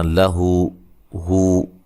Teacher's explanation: یہ جو الٹا پیش ہے واو مدہ کے قائم مقام ہوتا ہے، اس کو بھی ایک الف کی مقدار کے برابر لمبا کریں گے